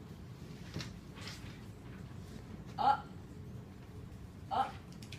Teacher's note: we stop the air in our throat it's a glottal stop